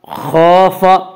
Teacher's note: خَافَ خا کو پر پڑھیں گے، خا حروف مستعلیہ میں سے ہے، حروف مستعلیہ 7 ہیں جن کا مجموعہ خصہ ضغط نقض ہے جو ہمیشہ ہر حال میں پر پڑے جاتے ہیں۔